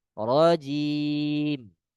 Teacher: Yang masuk ke hidung adalah mimnya.